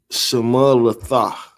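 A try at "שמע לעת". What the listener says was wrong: Well, you that's too many. You didn't connect. You did them all single. Single, connect the last 2. Single, connect the last 2.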